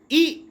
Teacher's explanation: फिर है ई, और ई का उच्चारण स्थान तालु है। यानी कि छोटी ई और बड़ी ई दोनों का उच्चारण स्थान तालु है